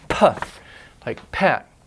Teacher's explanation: a hard P or aspirated P has a puff of air